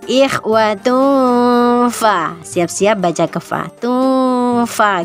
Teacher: Jadi diberikan haknya dulu, dibaca samar dulu, ikhfanya diberikan. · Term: ihfa hakiki